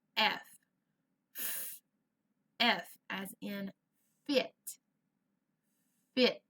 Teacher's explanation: the f sound is the puff of air it doesn't have a voice